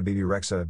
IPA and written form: ˈbiːbi ˈreɪdʒə (Bebe Rexha)